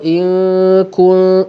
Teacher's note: dengung tu nipis, jangan tebalkan dengung kerana ikhfa berlaku pada huruf yang nipis. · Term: ikhfa hakiki